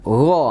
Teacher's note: Ya, dekat ke pangkal lidah ya, ujung tenggorokan ya. Dan hurufnya nih bersifat tebal ya. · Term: huruf gho